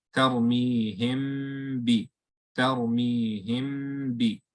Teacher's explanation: So there's a meme sakina followed by a ba. So we close our lips on the meme, hold the sound, the ghunna, and then open on the ba.